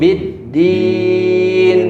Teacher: Tapi bidin baru ke nunnya. Di nunnya ada sifat tawassul. Tawassul. Bidin. Berjalan sedikit.